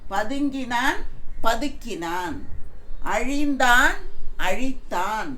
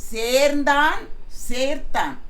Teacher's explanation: அந்த மெல்லின எழுத்து எல்லாமே வல்லின எழுத்தாக மாறுகிறது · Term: மெல்லினம் வல்லினமா மாறும்போது